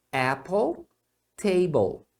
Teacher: E aqui sempre vai ser a consoante mais o l que é o som do Dark L é o som do L Ok então Apple table Então é